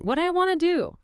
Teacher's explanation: Look at all the compression there. Want to becomes wanna.